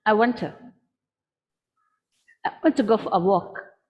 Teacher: so only my goal and my walk is clear for you the rest of it is squished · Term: stress time